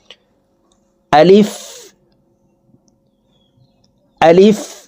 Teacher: মানে এখানে টান হবে না। এই আলিফ উচ্চারণ করার সময় টান দেওয়া যাবে না। দ্রুতভাবে উচ্চারণ করতে হবে।